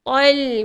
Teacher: Tepi hujung lidah ni sentuhlah dekat bahagian gusi atas ni. Tol. Kemudian suara alirkan sedikit. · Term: Lam nipis